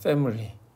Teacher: 이 L 사운드는 앞에 글자의 종성도 주고요. 뒤에 글자의 초성도 줘.